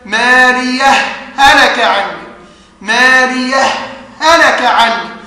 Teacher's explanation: قالوا لنا الإمام حفص له فيها وجهان، الوجه الأول الإدغام فيقرأه هكذا مالية هلك عني، مالية هلك عني، فأضغم الهاء الأولى في الثاني